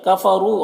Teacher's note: را کے اوپر پیش ہے، را کو پر پڑھیں گے